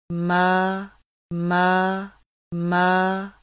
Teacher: मीम खड़ी ज़बर मा की आवाज़ को नाक में ले जाकर पढ़ने से बचाना